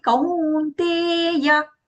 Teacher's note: Kau and te both long sounds.